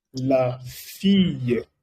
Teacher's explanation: En francés, cuando doble L está precedido de una I, se pronuncia Y.